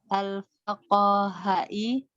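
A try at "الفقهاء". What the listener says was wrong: Enggak payah lidahnya membaca al-faqaha. Kan sudah menjadi bahasa Indonesia itu, fuqaha ya. Fuqaha kan?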